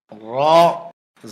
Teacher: জিহ্বার আগার পিঠ উপরের তালুতে লাগবে, মোটা হবে, বাংলা আকার প্রকাশ পাবে না